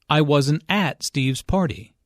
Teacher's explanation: Notice that the emphasis here is on at. Although prepositions normally have weak stress, in this case, at means there.